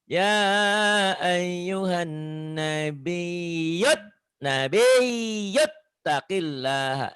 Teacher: Ya ayyuhan, nunnya ditahan gunnah.